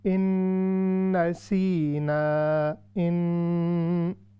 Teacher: اس کے بعد ہے ان نسینا، ان، یہ ہو رہا ہے غنہ، اور غنے کے ساتھ ساتھ ادغام مع الغنہ بھی ہو رہا ہے، یعنی نون ساکن کے بعد نون آ رہی ہے، تو اس کو ہم نے لازمی ناک سے 3 سیکنڈ تک ہم نے اس کی آواز نکالنی ہے